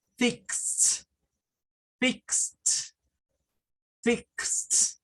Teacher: Ahora, ¿qué pasa con esa ED del final? Bueno, como termina en s, le vamos a agregar un sonido de T. Entonces, no es fixed, es fixed, fixed, fixed.